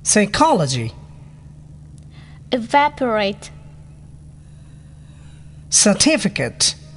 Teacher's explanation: four syllable second syllable stressed